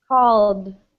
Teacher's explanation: so it's a D sound, but it's not an ID sound.